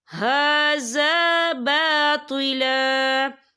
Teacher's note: ہا کے پر کھڑی حرکات ہے، تو ہم اسے 2 یا 3 حرکت کے برابر کھینچیں گے